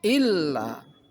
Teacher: ada lam yang ditasdid, maka huruf sebelum lam ditekan